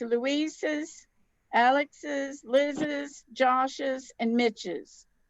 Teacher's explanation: the apostrophe s adds an extra syllable after the sounds of an s like ross's z sh and ch